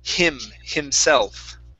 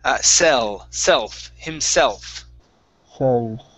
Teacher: When you pronounce that L, make sure to curve that L up and touch the top of your mouth right behind your top teeth